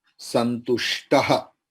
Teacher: Cut the O and put visarga.